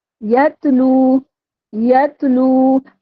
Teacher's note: लू को हमने खींचते हुए तीन अलिफ की मदार खींचते हुए इसका वफ करना है